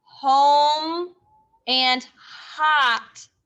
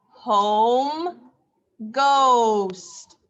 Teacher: can say o or can say ah hot is not correct home says o not ah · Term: long o